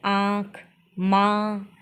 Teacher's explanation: अनुनासिक हवा नाक और मुंह दोनों से निकलती हो जैसे आंख मा जिसमें अपने नाक और मुंह से दोनों से हवा एकदम तेजी से बाहर की ओर आती है उन्हें अनुनासिक स्वर कहते हैं।